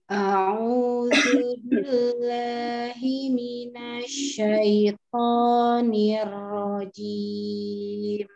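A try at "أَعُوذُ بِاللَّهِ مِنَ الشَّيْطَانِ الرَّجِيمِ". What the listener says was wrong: Sekali lagi. Asyah lebih ditekan, dialirkan lagi shinnya.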